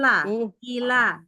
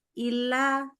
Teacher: jadi benar-benar i baru la, ila, jangan illa gitu. Kalau illa itu kan L-nya jadi nyangkut di i-nya.